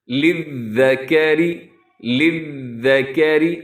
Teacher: اسے یہ ذال ہے اور یہاں زیادہ چانسز ہوتے ہیں کہ ذال کو زا نہ کر دیا جائے۔ للذکر، للذکر، را اس میں باریک رکھیے گا۔